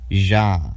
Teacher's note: the voiced post-alveolar fricative, ja. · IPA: /ʒ/